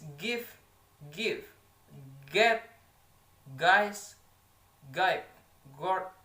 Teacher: a voiced velar stop sound G